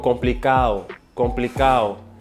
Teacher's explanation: if there's a D in between vowels, it's gonna go away